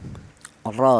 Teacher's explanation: Jadi jika ada huruf ro berharakat fathah itu cara bacanya ro itu dibaca tebal ya ro seperti itu menggunakan lidah bagian belakang diangkat ke atas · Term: tafhim